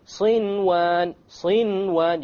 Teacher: Without any ghunna, you make the noon clear and you move on. Why? Because it's in one word. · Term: idhar